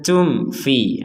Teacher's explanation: mim mati bertemu fa, kita baca jelas.